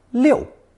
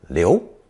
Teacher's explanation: is pronounced fourth tone Liu and more rarely second tone Leo